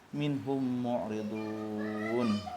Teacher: Mimati bertemu mim itu hukumnya idgham mimi, idgham mutama sila ini wajib juga didengungkan